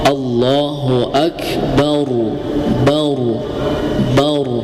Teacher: Contoh Allahu akbar bar ya karena sebelum huruf ro ada huruf ba. banya berharakat fathah maka dibacanya tebal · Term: tafkhim tebal